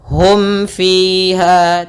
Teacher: Karena di sini huruf mim bertemu dengan fa, yang mana fa termasuk huruf huruf syafawi yang dia huruf izhar syafawi, maka harus jelas.